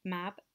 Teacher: the lips are closed for the sound m we then have to open them to make the sound a for mab and then we have to close them again to make the sound b